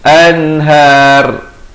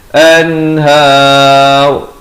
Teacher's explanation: Di sini izhar mutlak, nun mati yang ada tanda mati asli bertemu ha, jangan panjang, terus bunyi an, masuk har. Dan kalau waqaf, ra ni jadi tebal.